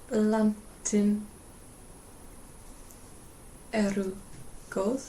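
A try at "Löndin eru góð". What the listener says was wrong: You said landin, but because it's got an A in it, and it's neuter, we have to change that vowel. Yeah, Lundin eru gold.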